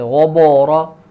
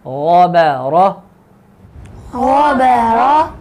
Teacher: اب یہ خیال کرنا ہے کہ غائن یہ موٹا حرف ہے، با یہ باریک حرف ہے، آگے را پھر موٹا ہے، تو با دو موٹے حرفوں کے درمیان ہے، لہذا با موٹا نہ ہو، جیسے غبورا یہ غلط ہے۔